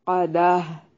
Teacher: वक्फ की सूरत में गोल ता को हाय साकना में बदल देंगे